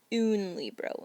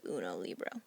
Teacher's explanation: the o is actually going to disappear and it will be unlibro instead of uno libro so the o disappears next to a noun the other thing